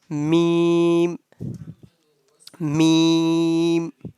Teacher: the sound of meme pronounced from the dry part of both lips